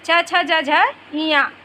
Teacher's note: तालव्य स्थान से उच्चारित किया जाता है